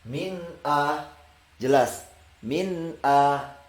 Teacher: nun sukun bertemu dengan hamzah, kita akan membaca min a, jelas min a